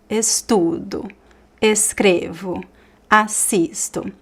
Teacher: All these words, they are stressed in the middle, right? So there is a movement that goes up and then down.